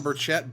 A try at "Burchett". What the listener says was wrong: The CH is silent, and also you put a K in there.